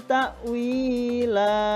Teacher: jadi tanwin dibaca fathah panjang dengan panjang 2 harokat, disebut mat iwad